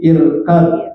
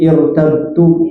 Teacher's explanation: Setiap ada rok sukun sebelumnya hamzah wasol yang dibaca i, maka roknya tidak ditipiskan, malah jadi tebal meskipun sebelumnya kasrah.